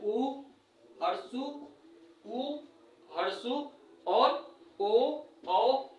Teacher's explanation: ऊ बोल के देखिए, आपका ओठ जो होगा वो गोलाकार टाइप का हो जाएगा। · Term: वृत्तमुखी